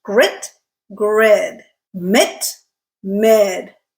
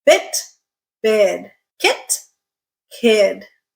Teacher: unvoiced first and vo second okay so here are some words listen to the difference in the length of these two words